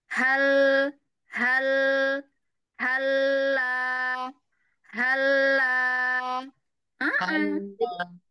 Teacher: ya ee ha ha bergerak atau enggak bibirnya enggak jadi memang lam kan hanya pekerjaan ujung lidah ujung lidah bertemu dengan gusi atas